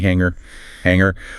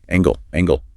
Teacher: Remember that nasal sound. No hard g.